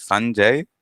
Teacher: the pronunciation and the emphasis is on the first syllable usually.